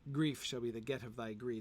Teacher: The real problem with that line is there are only 3 beats in it. You can make the alliteration work, although it shouldn't alliterate on the last syllable, or on the last beat. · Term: only 3 stresses